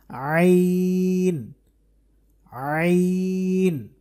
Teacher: এই আইন যে হরফ এটাও কিন্তু কন্ঠের মাঝখান থেকে উচ্চারণ করতে হবে আইন আইন জবর জের পেশ দিয়ে যদি আমরা চেষ্টা করি উচ্চারণ